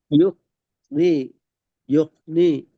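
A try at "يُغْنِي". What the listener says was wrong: நீ. இப்ப நீட்ட வேணாம். யோக்.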